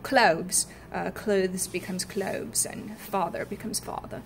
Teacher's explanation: The voiced TH becomes a V, such as clothes.